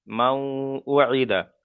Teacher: এখানে নুন সাকিনের পরে ওয়াও এসছে, তাই নুন সাকিনকে ওয়াও এর সাথে মিলিয়ে একালিপ পরিমাণ গুণনা করে পড়তে হবে, একে ইদগামে নাকিস বলা হয়।